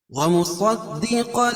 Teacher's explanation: صاد کو پر پڑھیں گے اور دال کے اوپر تشدید ہے، اس میں سختی ہوگی